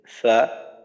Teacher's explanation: তো আমরা জানি ফা অধিক দুর্বল হরফ, এখানে কোনো শক্তিশালী সিফাত নেই। ফা উচ্চারণের সময় আমরা মাখরাজের ব্যবহারটা দুর্বলভাবে করব, মাখরাজে শক্তভাবে চাপ দেব না, আওয়াজ চালু বাতাস চালু। তো ফা উচ্চারণ করার সময় শুধুমাত্র যদি মাখরাজের দিকেই খেয়াল দিই, মাখরাজটা ঠিক রাখি এবং একটু দুর্বল করে করি, উচ্চারণটা করি, তো ইনশাল্লাহ ফা উচ্চারণের ক্ষেত্রে আমাদের আর কোনো সমস্যা থাকবে না। · তো 14 নম্বর মাখরাজ নিচের ঠোঁটের পেট সামনের উপরের দুই দাঁতের আগার সঙ্গে লাগাইয়া ফা